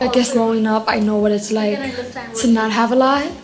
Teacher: New York Latino English speakers have a particularly light L.